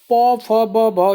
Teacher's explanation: देखो प बोलने पर ओठ आपके दोनों चिपक रहे होंगे, तो कौन सा हो जाए, ओष्ठ हो जाए।